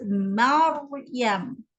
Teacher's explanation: ra itu mati. Sebelumnya ada huruf yang berbaris atas. Maryam. Jadi kena tebalkan dia. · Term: ra yang tebal